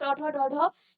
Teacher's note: ट ठ ड में आपकी जो जीभ है वो हल्का सा मुड़ रही है और इनका उच्चारण हो रहा है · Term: मूर्धा